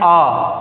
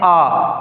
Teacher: क्या खुल जाए, पूरा खुला हो, पूरा खुला हो। जब मुख पूरा खुला होगा तो क्या होगा, दीर्घ आ मतलब विवृत स्वर होगा।